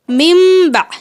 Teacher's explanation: میم نون زیر من، با عین زبر با، ممبع. یہ دیکھیں نون کا جو ساؤنڈ ہے وہ سائلنٹ ہو گیا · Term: اخفا